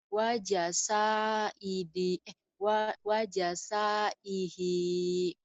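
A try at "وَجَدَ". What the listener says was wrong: wajah saihi itu kan dal, Neng. Wajah sadihi.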